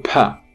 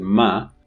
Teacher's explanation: pa requires opening of the lips for the release but for ma you don't need to open it the release is happening through your nasal cavity this is why a nasal is not plosive it's not instant